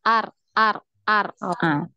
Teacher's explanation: Jangan sampai hilang getarannya jangan banyak jangan hilang jadi dia berada di pertengahan